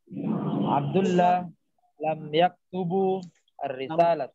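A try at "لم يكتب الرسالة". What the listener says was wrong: Lam yaktubir risalah. Bukan bu tapi bi. Ya, kenapa bi? Karena alif lam setelahnya tuh ada ar-risalah tuh. Ada alif lam setelahnya, makanya dia jadi kasrah di sini.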